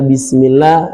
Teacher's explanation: Sifat shafir ini sifat yang tajam sekali bunyi suaranya.